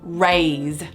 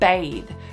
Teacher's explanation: In order to make a family rhyme, I'm going to retain or match the vowel sound A, but I'm going to swap the Z sound for a different fricative